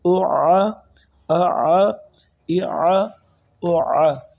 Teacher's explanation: پہلے حمزہ کی آواز آئی، حمزہ کی، پھر عین کی، حمزہ کی حلق کے نیچے والے حصے سے، پھر حلق کے درمیان والے حصے سے عین کو ادا کیا